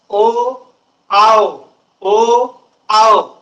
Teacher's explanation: जिभेचा तर कुठं स्पर्श होत नाही आवाज तर कंठातून निघतो